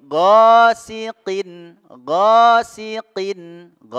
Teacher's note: huruf Gin ini tenggorokan bagian atas